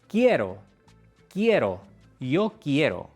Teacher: Tu cerebro intenta separar el sonido qui-e-ro, pero la i es solo una transición rápida.